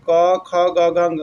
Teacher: क ध्वनि यानी क वर्ग का उच्चारण स्थान कंठ होगा